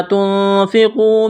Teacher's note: نون ساکن کے بعد فا ہے، حروف اخفا ہے، غنہ کریں گے، آواز ناک میں چھپائیں گے